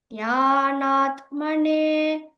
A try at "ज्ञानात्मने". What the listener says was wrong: it feels like you're saying the tana. It is simple ज्ञानात्मने both na are the takarana only ज्ञानात्मने